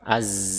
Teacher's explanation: Bedakan, sama-sama makhrajnya tetapi huruf zai dan sin memiliki perbedaan pada sifat, ya, pada sifat. Di mana huruf zai diucapkan dengan bergetarnya bagian pita suara